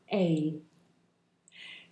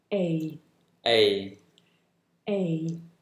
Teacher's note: [Music] this is a diff form a double vowel sound the shape the mouth makes changes from the beginning of the sound to the end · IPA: /eɪ/